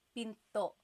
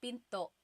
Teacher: Do you hear the glottal stop when I say pinto? Pinto. So it's not pinto.